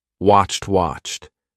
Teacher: sounds when people say watched often it just sounds like watch people forget the Ed on the end sometimes people do it like watch D do it with a d but it's not a d it's a t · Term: CHT